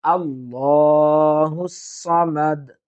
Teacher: লামটা আমরা পুর করার চেষ্টা করব